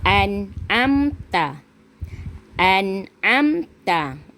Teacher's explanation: Nun sakinah bertemu ain dalam satu kalimah. Kena baca dengan jelas, tak boleh dengung. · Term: Izhar halki